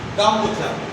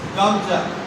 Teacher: মাঝের থেকে ও নামক স্বরবর্ণটা উঠে গেল, লোপ পেল। তাহলে এইটা মধ্য স্বরলোপের উদাহরণ।